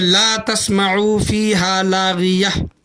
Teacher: लेकिन यहाँ पर क्या बोला गया है ऊपर कि देखें कि ता पर दो ज़बर, ये देखो ता पर दो ज़बर हैं, दो ज़बर दो पेश दो ज़ेर अगर है तो उसे हा से बदल कर पढ़ना है, हा से कन्वर्ट करना है। ता है लेकिन उसको हा करके हमें पढ़ना है